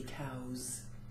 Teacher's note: you might spell cow with a W at the end but the sound it ends with is a vowel therefore the S turns into a z